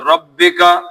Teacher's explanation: را موٹا پڑھنا ہے پتلا پڑھنا ہے؟ را موٹا پڑھنا ہے، زبر اور پیش کے ساتھ موٹا ہوتا ہے